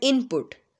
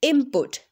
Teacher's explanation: in quick rapid speech I will say input mean there is instead of n there is M sound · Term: assimilation